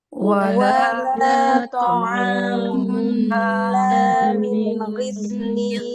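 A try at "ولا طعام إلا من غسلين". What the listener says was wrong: Ya, Nah, ghain ketika dia kasroh, dia jangan tebal kayak punya sifat itbaq ya, Mbak. Ghain dia nggak punya sifat itbaq. Jadi ketika dia kasroh, maka dia nggak tebal kayak ketika posisi dia fathah. Illa min ghislin.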